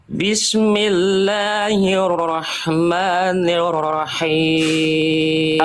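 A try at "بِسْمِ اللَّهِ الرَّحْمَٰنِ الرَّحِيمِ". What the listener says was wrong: tinggal dikurangi sedikit getarannya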